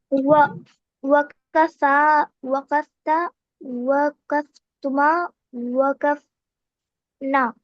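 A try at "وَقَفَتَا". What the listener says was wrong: चलिए बिल्कुल सही आपने बनाया, लेकिन जो यू वाला, जो शी दे टू वाला है उसमें थोड़ा सा ध्यान रखिए कि वकाफता, वकाफता। ठीक है ना, उसमें जबर रहेगा और उसके बाद जो है अलिफ रहेगा।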